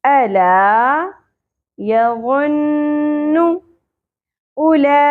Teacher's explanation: حمزہ کی پیش شارٹ ہوگی, او نہیں پڑھنا. دیکھیں یہاں پر آپ کو نظر آ رہا ہے کہ واو کے اوپر جزم نہیں ہے, اس لیے یہ واو ساکن نہیں ہے.